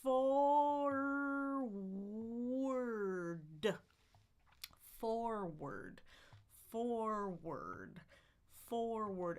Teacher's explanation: Then I can end with my d, tongue on the ridge, and explode with vibration.